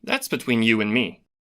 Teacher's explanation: here the d is dropped so that we don't hear it at all